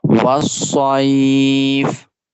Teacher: We make the Sod sound longer because we are stopping on it.